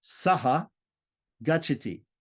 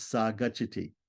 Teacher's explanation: Sa is saha. But when saha, a short a visarga is followed by a g, which is a soft consonant, the visarga drops out, and then we're left with sa.